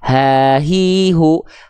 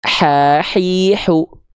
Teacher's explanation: Kalau H besar dari pangkal tenggorokan, nafasnya karakternya biasa, ha, hi, hu. Kalau H kecil dilafalkan naik sedikit ke bagian tengah tenggorokan. Dia karakter nafasnya mengalir dengan berbisik.